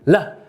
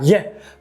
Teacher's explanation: ele fala o L, lá, ao invés do LH, lha, porque é o fonema mais parecido